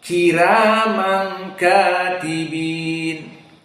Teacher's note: qiraah Warsh ra dalam keadaan muraqqaqah